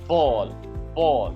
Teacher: मुझे पहले लिप्स जोड़ने पड़ते हैं। फिर अपने फेफड़ों से हवा निकाल के बंद करके प्रेशर देना पड़ता है। और फिर मैं एकदम से लिप्स को छोड़ता हूं। तो साउंड प्रोड्यूस होता है बॉल।